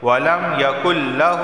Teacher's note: نون ساکن کے بعد لام آیا ہے، تو اس صورت میں ادغام ہوگا، یعنی نون کو لام میں داخل کر دیں گے۔ ادغام کا معنی ہی یہ ہوتا ہے کہ ایک چیز کو دوسری چیز میں داخل کر دینا، تو ہم نے نون کو لام میں داخل کر دیا، یقل۔